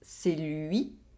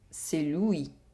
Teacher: We have the [ɥi] sound in the first sentence, and the [wi] sound in the second sentence.